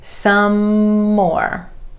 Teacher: We're holding that M at the end of some and continuing it on into the beginning of more.